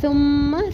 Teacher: تشدید میم کے اوپر تشدید غنہ کریں گے ایک الف برابر